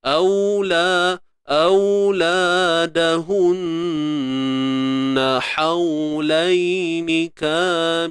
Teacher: Gunnah musyaddadah. Dengung sempurna tuan-puan.